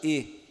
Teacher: Temos também, pulando aqui para a faixa dos médios, nós temos o E. Então, ele é um vocóide anterior médio fechado